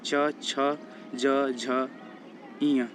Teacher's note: च वर्ग तालू से बोला जाता है